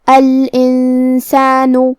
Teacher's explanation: سین حروف الاخفاء میں سے ہے اور اخفاء کا معنی ہے چھپا دینا، تو ہم نون ساکن کو چھپاتے ہوئے اور غنہ کے ساتھ یہ حکم کو ادا کریں گے